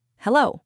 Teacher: Just hello with a rising tone, like a question, because you don't always know who's calling.